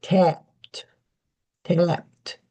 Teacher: Usually you don't hear the P very strongly, but you hear the T strongly. So you get tapped.